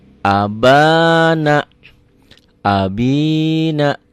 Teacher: A satu ketukan, ba-nya 2 ketukan. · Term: mad tobi'i